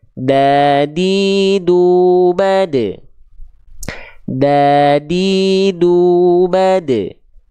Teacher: perhatikan titik berwarna hitam di sini ini adalah persentuhan huruf Dal ujung lidahnya disentuhkan ke Pangkal gigi seri atas kita